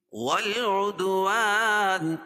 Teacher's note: دال پر قلقلہ ہوگا کیونکہ حروف قلقلہ کی 5 حرفوں میں سے ان پر جزم ہے